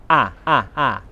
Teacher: the lips are unrounded for ah it's a short vowel sound all English diphthongs are made of short vowel sounds ah ah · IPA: /a/